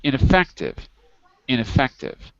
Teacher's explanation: notice the stress is on the third syllable on the third syllable